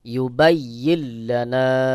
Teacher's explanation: নুন সাকিন এর পরে ইদগামের হরফ লাম গুন্না ছাড়া মিলায় পড়তে হবে